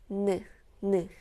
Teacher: For this one, your tongue touches the ridge right behind your upper front teeth and the air comes out through your nose.